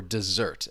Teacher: the stress is on that second syllable